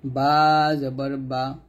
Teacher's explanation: বাটা 2 ঠোঁটের ভিজা অংশ থেকে মিলিয়ে উচ্চারণ করি